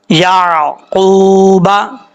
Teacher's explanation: واو ساکن ہے اس سے پہلے حرف پر پیش ہے، ایک الف کی مقدار اس کو لمبا کر کے پڑھیں گے۔ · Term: واو مدہ